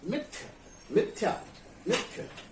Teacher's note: मिथ्या में मी पर जो है क्या हो रहा है? जोर लग रहा है